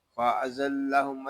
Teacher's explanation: یہاں زا جو ہے یہ حروف صفیریہ میں سے ہے، اس کو ادا کرتے وقت سیٹی کی طرح آواز نکلے گی۔ لام شدد ہے، زا کو لام کے ساتھ ملا دیں گے، آگے میم کو شین کے ساتھ ملا دیں گے۔